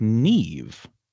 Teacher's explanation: And and as you just >> told me, >> that mh turns into sort of a v sound